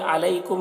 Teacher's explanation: یہاں پر یا لین ہے اور میم میں اظہار شفوی ہو رہا ہے